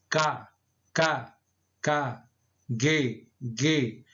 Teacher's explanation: você sente o esforço maior lá no final da língua · contato e a parte traseira da língua né e o véu palatina